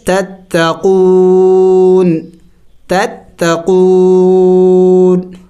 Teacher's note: وقف میں ہم نے اس نون کو سائلنٹ کرنا ہوگا یعنی ساکن کرنا ہوگا. پڑھیں گے تتقون.